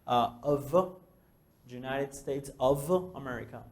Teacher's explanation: OF no se dice off con F, se dice con V. Porque si dices F, va a sonar a que estás diciendo OFF.